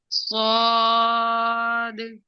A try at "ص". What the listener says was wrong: ابھی صحیح طرح سے موٹا نہیں ہو رہا. صاد.